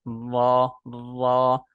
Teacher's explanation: जबान का किनारा जब ऊपर के सामने वाले दो दांतों के मसूड़ों से लगे ठीक है और जबान की पुष्ट तालू की तरफ उठे तो रा निकलता है